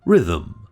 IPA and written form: ˈrɪðm̩̩ (rhythm)